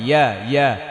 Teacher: জিব্বার মধ্যখান দিয়ে উচ্চারণ হবে